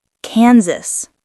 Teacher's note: Kansas, not Kansas. The S is voiced, like Z.